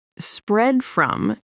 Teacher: Spread from is a case of what's called a stop consonant. The D at the end of spread is a sound the mouth forms but doesn't fully release before jumping to the F of from. So instead of hearing spread from with two separate beats, you hear the D absorbed almost silently into the transition.